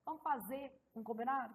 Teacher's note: A supressão do R final de formas verbais.